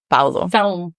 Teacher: in Portuguese it's Pao it's a very nasal sound